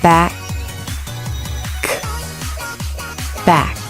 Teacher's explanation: The back of the tongue reaches up to touch the soft palate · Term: K sound